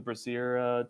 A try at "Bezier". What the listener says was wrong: Bezier tool. Yeah, you sound like you're saying Brazier, which is something else.